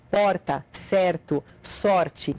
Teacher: parte dos Gaúchos faz o r com a ponta da língua esse som de R é feito com a ponta da língua vibrando